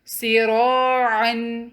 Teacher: یہاں پہ را ہیوی پڑھا جائے گا کیونکہ فتحہ کے ساتھ ہے، اس کے بعد جو الف مد ہے وہ بھی ہیوی پڑھی جائے گی۔